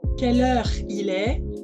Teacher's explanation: le E de quelle heure il est se fait avec la langue devant